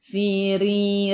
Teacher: Ra baris bawah kena baca dengan nipis, senyum. Tarqiq nama dia. Firi. Ri dua harakat ada ya mad asli.